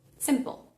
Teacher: entre la P y la L, al final de la palabra, aparecería como una especie de sonido accesorio